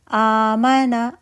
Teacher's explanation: آمنا، آ دو حمزہ تھیں، ایک پہلی حمزہ زبر کے ساتھ ہے، دوسری حمزہ ساکن تھی. ساکن حمزہ زبر کی نسبت سے الف میں بدل گئی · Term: مد بدل